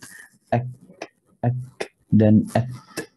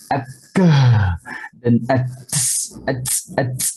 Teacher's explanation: Kalau lebih kepada hams akan juga kurang jelas. Jadi kaf dan ta harus kita pastikan angin tidak banyak yang keluar sama dua huruf ini.